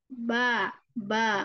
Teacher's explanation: huruf ba hanya mempertemukan kedua perut bibir bagian bawah